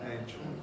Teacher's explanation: Everything is strong in singing, everything that can be really, and so people say angel, even though in real life, in ordinary pronunciation, nobody would dream of saying angel, it's only angel, with schwa L or syllabic L, angel. We know that it's an A, of course, in some abstract sense, because we have the adjective angelic, which tells us, but no.